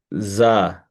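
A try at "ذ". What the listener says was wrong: Yes, but you touch that. Touch your teeth.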